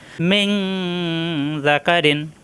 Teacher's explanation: আসছে জাল অর্থাৎ ইকফা এখানে অনুসারের মত গুন্না হবে মিন জাকারিন নুন সাকিনের পরে আসছে ইকফার হরফ অনুসারের মত গুন্না করতে হবে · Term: গোপন গুননা